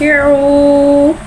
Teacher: वाव मद्दा को एक अलिफ यानी 2 हरकत के बराबर खींच के पढ़ेंगे